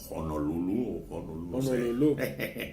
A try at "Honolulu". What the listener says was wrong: No, que es que la H no se pronuncia como J. Honolulu.